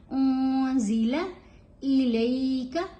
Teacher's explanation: यहाँ नून साकिन है और उसके बाद जा है, तो यहाँ इहफा होगा, नून की आवाज गुनगुनी होगी, क्लियर नहीं होगी